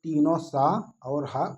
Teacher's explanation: तो तीनों स और ह उष्म संघर्षी व्यंजन कहलाते हैं